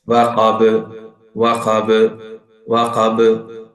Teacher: by the end of every qalqala letters here in this surah, it carries strong qalqala, more than the weak shape